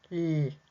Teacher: the lateral approximant, where the air is coming out of the side of the tongue, in l. So we have that same tongue movement for all of those sounds.